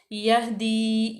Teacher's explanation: हा जो है वो हरूफ हल्की में से और साकिन है। यह, यहाँ पे इसका मखरज बिल्कुल वाजिया करेंगे।